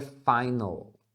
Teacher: não faça o ditongo ou, porque é comum a gente fazer isso quando as palavras terminam em L em português, né? Então, final, a gente acaba falando final, com ou, ao. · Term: Dark L